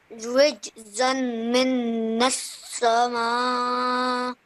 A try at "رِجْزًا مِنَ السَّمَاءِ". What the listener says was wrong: Okay, again, you're joining you're saying it as min. Okay, this is not min. This is rijzammi and then nasamai, like that.